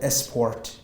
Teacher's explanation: Um, and you said esport instead of sport. Uh, you added the schwa before the word sport.